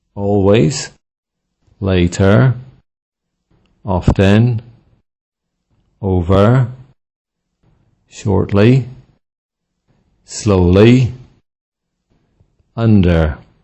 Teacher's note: Adverbs and prepositions with stress on the first syllable